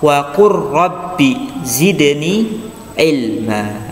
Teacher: nggak boleh kita baca wa qul rabbi, tapi langsung masuk ke huruf ro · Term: idgham